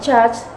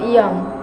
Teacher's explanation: These sounds are produced when the blade of the tongue, middle of tongue, touches the hard palate. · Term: Palatal sound